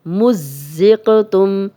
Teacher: میم کی پیش زا سے ملے گی کیونکہ زا پہ شد ہے تو 2 بار پڑھیں گے اور ایک دفعہ زا کی زیر کے ساتھ پڑھیں گے.